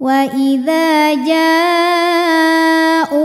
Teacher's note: Maka jimnya dipanjangkan, boleh 4, boleh 5 harokat, tapi tidak boleh 2. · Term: mad wajib muttasil